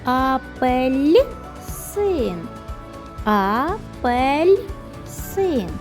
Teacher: Ми чуємо м'якенький ль всередині слова